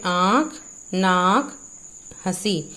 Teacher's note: मुंह और नाक दोनों से ही स्वर की आवाज आती है। इनके ऊपर चंद्र बिंदु लगाते हैं। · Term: अनुनासिक